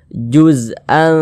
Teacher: cara membacanya disamarkan kemudian didengungkan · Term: ikhfa hakiki awsat